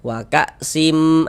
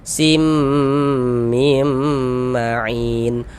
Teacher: Jadi cara membacanya dengan cara memasukkan tanwin dimasukkan ke huruf mim. Nah, waka sim, kemudian digunnahkan. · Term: idgham bi gunnah